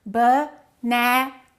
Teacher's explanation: We stress one and we reduce the rest. In this case, banana, the second syllable is stressed.